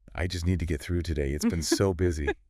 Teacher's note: the intonation would likely be a little lower, perhaps with a slight sigh implied